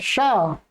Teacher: इचु यशास्तालव्याः, तालु स्थान है इसका